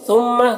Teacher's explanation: میم مشدد ہے، میم میں غنہ کریں گے۔ فریقم، را کو باریک پڑھیں گے، را کے نیچے زیر ہے۔